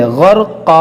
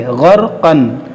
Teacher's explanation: जब हम वक्फ़ करेंगे तो इस 2 ज़बर को हम अलिफ पढ़ेंगे, ग़रक़ा। इसको ग़रक़न नहीं पढ़ेंगे, ग़रक़न, क्योंकि हमने कायदा पढ़ा हुआ है मदनी कायदा में कि 2 ज़बर पर अगर वक्फ़ करेंगे तो उसको अलिफ से बदल देंगे।